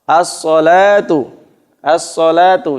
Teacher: Jadi alnya, lamnya tidak dibaca, langsung dimasukkan. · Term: idgham syamsiyah